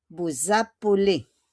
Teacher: It is an S, but we pronounce it as Z.